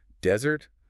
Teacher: Desert, the hot sandy place, has the stress on the first syllable.